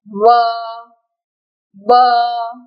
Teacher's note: दांत और होठ जब परस्पर मिलते हैं तो उच्चारण होता है व